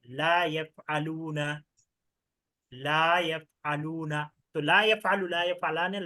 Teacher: এই লাটা হচ্ছে টান দিয়ে পড়তে হবে হ্যাঁ এক আলিফ টান